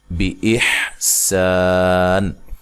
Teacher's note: سین کو باریک سیٹی سے الف مدہ ہے اور ساکن اور یہ نون وقف کی صورت میں تو مد کے ساتھ وقف کر سکتے ہیں، ملانے کی صورت میں یہ نون تنوین کا ادغام ہوگا، بِإِحْسَانٍ وَلَا، ٹھیک ہے۔